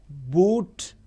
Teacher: whereas o is back close and rounded